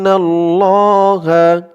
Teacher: ইন হামজা দিয়ে নুন ধরবে ওয়াজিব গুন্না